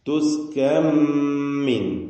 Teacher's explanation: സാക്കിനത്തായ നൂനിനെ ശേഷം മീമിലേക്ക് പൂർണമായും ലയിപ്പിക്കണം കാമിൽ ലം തുസ്കൻ എന്ന നൂന് തീരെ കേൾക്കാതെ പൂർണമായും മീമിന്റെ ശബ്ദം മാത്രമാക്കി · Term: ഇദ്ഹാം